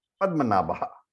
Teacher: it sounded like that he used a Visarga after Padmanabha